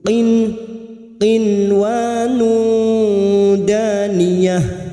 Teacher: bertemunya nun sukun dengan huruf ww inwanun [Tertawa] Bismillahirrahmanirrahim inwun danah nun sukun bertemu wau dibaca jelas tanpa mendengung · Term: zhar mutlak